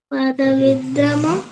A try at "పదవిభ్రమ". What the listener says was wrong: కాదు విభ్రమ విద్రమ కాదు పదవిభ్రమ పదవిభ్రమ